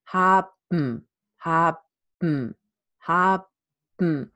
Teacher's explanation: definitely I have a syllabic M